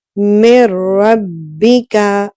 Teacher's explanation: नून को रा से मिलाकर पढ़ा लेकिन गुन्ना नहीं किया, क्योंकि रा जो है ये एक्सेप्शन है, इसमें गुन्ना नहीं होता।